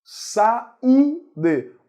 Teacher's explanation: O U é mais forte, forma hiato com a vogal anterior.